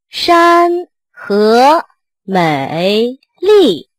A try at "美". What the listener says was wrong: 这 个 美 又 开 始 拖 ， 美 ， 美 ，